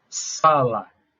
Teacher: a sílaba tônica é a penúltima sílaba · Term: paroxítona